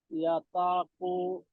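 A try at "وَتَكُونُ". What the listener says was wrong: ওয়াতাকু, ওয়াতাকু, এটা ওয়াতাকু। না ইয়া না, ওয়াও জবর ওয়া, ওয়াও জবর ওয়া।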